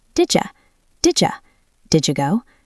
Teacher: When you push them together, D plus Y creates a j sound, like the J in juice.